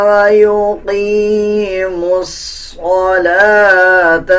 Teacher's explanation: میم کو ڈائریکٹ صوت کے ساتھ ملا کے پڑھا جائے گا